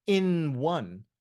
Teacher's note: the initial sound of one is actually a consonant sound it's a w